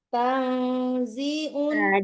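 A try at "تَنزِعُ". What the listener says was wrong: Jangan tang. Tengah-tengah. Jangan tang ya. Samar ya. Tang. Tang. Bukan nun. Bukan en. Bukan eng. Ya, bukan eng. Ya, tengah-tengah.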